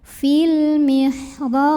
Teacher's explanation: Karena ada huruf qalqalah yaitu ba yang sukunnya bukan sukun asli melainkan disukunkan. Maka dipantulkan ba-nya ini dengan pantulan yang besar, lebih berkumandang. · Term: qalqalah kubro